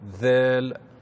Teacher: il faut mettre le bout de la langue sur l'extrémité des incisives supérieures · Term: lettre Dhal